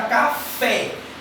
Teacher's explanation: É deixar a vogal com som aberto